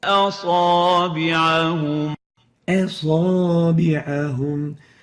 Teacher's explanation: we need to adhere to the conditions of the attenuation, tarqiq of the hamza. We shouldn't really velarize it.